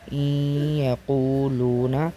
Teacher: یعنی نون کو ہم نے یا میں ادغام کر لیا، اسی کو ادغام کہتے ہیں اور اس غنہ کے ساتھ بھی ادا کیا جائے گا۔ غنہ کی مقدار 1-2 الف کی ہوگی۔